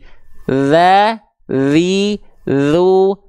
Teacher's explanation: ujung lidah nempelnya ke ujung gigi seri atas aja Udah ya gigi seri bawah gak perlu ikut mencapit bagian lidah